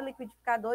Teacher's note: seria uma palavra oxítona porque a última é a sílaba mais forte